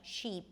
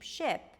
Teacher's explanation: we have the tense E and the relaxed I in American English